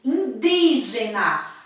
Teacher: A sílaba mais forte é di.